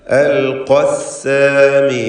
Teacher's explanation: പക്ഷേ ചേർത്ത് വായിക്കുമ്പോൾ അലിഫ് ഉണ്ടാവുകയില്ല. ഖാഫിൻ്റെ തഫ്ഖീമോടുകൂടിയുള്ള ഫത്ഹ മാത്രം ഉച്ചരിച്ചാൽ മതി.